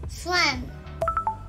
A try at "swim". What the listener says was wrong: You gotta say the W.